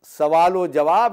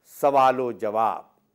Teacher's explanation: जब आप बोलेंगे तो सवाल व जवाब में जो वाब है वो पहले लफ्ज़ के आखिरी हर्फ के साथ जुड़ जाएगा